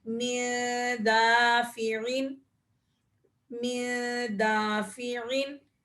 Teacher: نون ساکن کے بعد دال آ رہا ہے، تو یہاں پر بھی ہم اخفا کریں گے